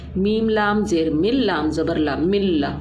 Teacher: ہم نے نون کی آواز بھی نہیں نکالی، نہ ہی آواز کے اندر، ناک کے اندر کوئی آواز اپنی ٹھہرائی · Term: ادغام بلا غنہ